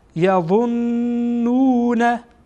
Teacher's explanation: این نون غنه خوانده میشه چون هر گاهی میم و نون مشدد بود غنه میشه